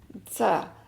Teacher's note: آپ کو تصویر سے اندازہ ہو گیا ہوگا کہ دانت جو ہیں وہ آپس میں ملتے ہیں، قریب آ جاتے ہیں، اور یہ نیچے کے سامنے والے دانتوں کے کناروں سے جب زبان کی نوک لگتی ہے تو زا کی آواز آتی ہے، اور سامنے والے دانتوں کے جڑ سے ہوتی ہوئی باہر آواز آتی ہے۔